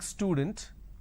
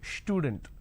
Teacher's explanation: So they add sh, they start it with sh instead of s.